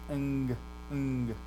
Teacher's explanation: That first gamma becomes a nasal in pronunciation, ng. So it's like our English word sing, ring, that ng sound, that's what happens to it.